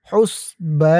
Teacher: বা এক আলিফ টান, জবরের পরে খালি আলিফ। হুসবা না, এখানে এক আলিফ টান হবে।